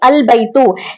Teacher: इसके शुरू में कोई हर्फ, कोई लफ्ज नहीं था, इसलिए यहाँ पर हमजा की आवाज आ रही थी